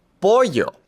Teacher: The double l makes a y sound in English.